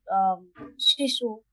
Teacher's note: तालव्य श के उच्चारण में गर्म हवा दोनों बगल से निकले, और जब बहुत शुद्ध उच्चारण होता है तो एक तरह की बहुत सुरीली सीटी जैसी आवाज आती है